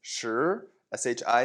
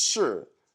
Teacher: shi, second tone. The to be verb is shi, fourth tone.